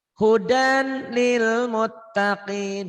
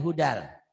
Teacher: Idgham bila gunah, idgham yang tidak memakai dengung ke hidung.